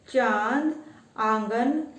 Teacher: अनुनासिक, इसका उच्चारण नाक और गले दोनों से होता है